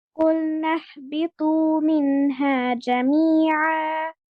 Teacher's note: আপনার হায়ের যে হামস, যে বাতাস, এটা যেন পুরোটাই মুখ থেকে বের হয়, যেন নাকে না, যেন কুলনা না এরকম না হয়।